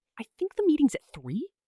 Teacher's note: Said with a rising tone sounds like you're asking permission to be right.